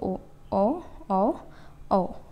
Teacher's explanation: ओष्ठ और कंठ दोनों को मिला के बोलेंगे